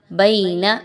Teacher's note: آپ نے یا لین کی ادائیگی کو 1 سے 2 الف کے برابر لمبا کر کے پڑھنا ہے